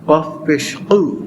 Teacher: জিহ্বার গোড়া থেকে যে কফ উচ্চারণ হয়, কফ পেশ উ, কাফ পেশ কু।